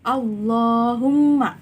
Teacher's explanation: membaca huruf lam pada lafal Allah dengan tebal mengangkat semua lidah dan menekannya ke langit-langit atas sambil menekan suara yang cukup kuat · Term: lam tafkhim